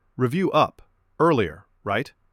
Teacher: I kept my voice warm and ended with a small rise like a friendly question mark.